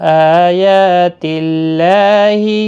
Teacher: اللہ کا لام اس زیر کی وجہ سے باریک پڑھا جائے گا، اس کے اوپر کھڑی زبر بھی ہے، ایک الف کی مقدار کے برابر کھینچ کر پڑھا جائے گا۔